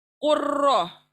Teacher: Next मिसाल लेते हैं, कुल और र के पर शद आया, तो लाम को वहीं छोड़कर हम काफ से र को मिलाएंगे, कुर्र। र को पुर पढ़ेंगे, काफ को पुर पढ़ेंगे,